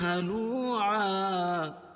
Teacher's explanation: إن الإنسان خلق هلوعا، نون مشدد، اور ان الانسان انسان اخفاء حقیقی، خلق خا اور قاف دونوں کو موٹا پڑھیں گے، ہلوعا واو مدہ اور دو زبر کی تنوین پر وقف کی صورت میں ایک زبر باقی رہے گی اور اس کی دوسری زبر کے قائم مقام الف لائیں گے